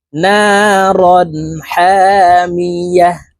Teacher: তানউইনের পরে ইজহারের হরফ হা আসছে এই কারণে এই তানউইন ওয়ালা হরফকে গুন্না ছাড়া স্পষ্ট করিয়া পড়তে হবে · ওয়াকফের ক্ষেত্রে হার উচ্চারণ করব এবং হাকে সাকিন করে ফেলবো